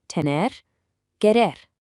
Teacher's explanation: try to gently tap or roll that R sound right at the very end of the words